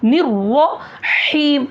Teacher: निर ये भी दो रॉ पुर होगी, निर की भी रॉ पुर होगी, रॉ जो बोल रहे हैं रॉ ज़बर रॉ, ये भी पुर होगी। निर्रहीम, ये हा हलक के दरमियानी हिस्से से अदा होगा